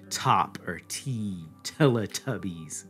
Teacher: the English T has that aspiration to it a little bit, a kind of retroflexion as well